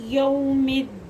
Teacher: ये हरूफ लीन है, वो साकिन से पहले ज़बर आ गया, तो ये इसको बिल्कुल लंबा नहीं करेंगे